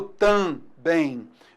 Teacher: Esse M serve apenas para nasalizar